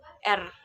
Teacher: Nah, kemudian ada getaran ataupun trill, terjadi kontak beruntun antara artikulator pasif dan artikulator aktif, sehingga getaran bunyi itu terjadi berulang